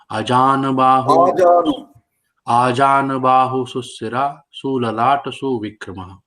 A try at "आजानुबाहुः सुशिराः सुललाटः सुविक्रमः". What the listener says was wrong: वो सब शॉर्ट सु है सुशिरा सुललाट सुविक्रमः।